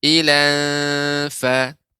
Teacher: fa adalah huruf istifal yang dia tidak tebal pengucapannya, dia tidak naiknya suara ke langit-langit, maka dibaca dengan tipis.